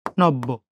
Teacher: শব্দের মাঝে বা শেষে যে বর্ণের সাথে জফলা যুক্ত হয়, সেই বর্ণের উচ্চারণ কয়বার? 2 বার। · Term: জফলার উচ্চারণ